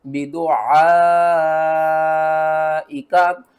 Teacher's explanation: الف مد زبر ع، حمزہ زیر ای، کاف زبر کا، بدعائکا، مد متصل ہے 5 الف کے برابر، اس کو بھی آپ نے کھینچنا ہے